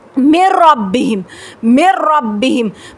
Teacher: نون کا ساؤنڈ نہیں آ رہا ہوگا، نوز میں آپ کی آواز نہیں جا رہی ہوگی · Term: ادغام بلا غنہ